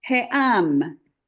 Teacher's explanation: this ayin, it works just like the aleph, so you're gonna separate it with a little glottal stop